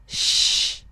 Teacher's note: Kalau sya itu dia desisnya pindah ke tengah lidah.